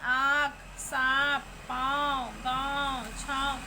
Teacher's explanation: इनका उच्चारण नाक और मुंह दोनों की सहायता से किया जाता है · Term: अनुनासिक